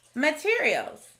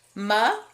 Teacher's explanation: in this word we hear the sneaky schwa sound in the first syllable ma instead of math we also see an r controlled vowel